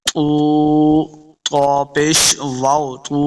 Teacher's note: طا حروف مستعلیہ سے اس کو موٹا پڑھنا ہے۔